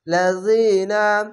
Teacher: জের পাশে ইয়া সাকিন এক আলিফ টেনে পড়বেন